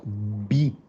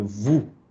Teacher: La B es labial, cerramos los labios. B. La VU es dental. VU es los dientes contra el labio inferior.